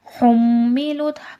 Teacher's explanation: حملت میم مشدد غنہ ہوگا